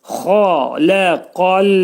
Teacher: Ə deyirik. Xa qalın boğazın yuxarısından çıxarılır. Lə incə qaf qalındır. İstila hərfidir. · Qafın məxrəci dilin sonu və dilçəyin başlanğıcındadır. Xaləqal. Burada ləmi saxlayırıq.